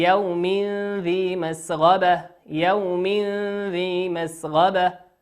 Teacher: تنوين أتى بعده حرف الذال، والذال من حروف الإخفاء